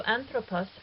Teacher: So anthropos has a short ultima, and the accented antepenult is fine. Here an is the antepenult, pro is the penult, and pos is the ultima.